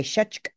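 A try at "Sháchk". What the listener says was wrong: Should be short, yeah. Shachk.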